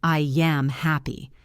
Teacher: I ends in a vowel sound and m starts with a vowel. We add a y sound. It becomes yam.